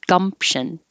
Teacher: because you're closing your lips for the m you don't have to make a pee gumption just hold them shut gumption jiffy jiffy beer coaster beer · It has a P here, but because you're closing your lips for the M, you don't have to make a P